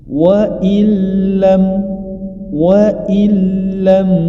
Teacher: ketika nun sukun bertemu dengan huruf lam adalah am bilunah jadi Nun sukunnya tidak dibaca langsung diidghamkan ke huruf lam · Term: idgham bila gunnah